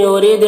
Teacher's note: را کو باریک پڑھیں گے، دال میں قلقلہ کریں گے